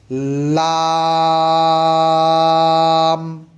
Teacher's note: জিহ্বার আগার কিনারা সামনে উপরের দাঁতের মারির সঙ্গে লাগিয়ে উচ্চারিত হয়।